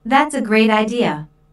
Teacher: Notice the emphasis on great.